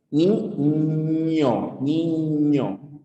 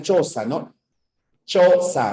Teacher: nuestra lengua se arquea y choca con la zona del paladar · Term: fonemas palatales